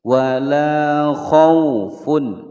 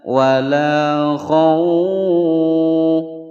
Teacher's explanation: Wala khaufun, ada wawu sukun sebelumnya fathah, hukum bacaan layyin, jadi tidak dibaca panjang, ya. Tidak boleh membaca wala khauf, salah, ya.